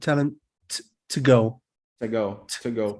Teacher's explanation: I feel that I don't pronounce the schwa there. I think I just say the t sound.